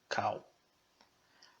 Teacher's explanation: essa vogal tem o som de A como na palavra kal, esse A mais fechado, kal. A próxima vogal de classe E é o tsere. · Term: kametz